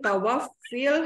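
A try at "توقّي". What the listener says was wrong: Tawakki itu huruf qaf bukan fa. Tawakki huruf qaf qaf.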